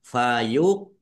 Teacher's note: Fayuqsimani qof sukun bacaan qalqalah dibaca memantul ditampakkan pantulannya